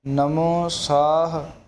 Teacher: ਇਸ ਨੂੰ ਸਾਹਾ ਨਹੀਂ ਬੋਲ ਦੇਣਾ, ਜਦੋਂ ਵੀ ਬੋਲਣਾ ਨਮੋ ਸਾਹ, ਹਾਹੇ ਨੂੰ ਮੁਕਤਾ ਰੱਖਣਾ।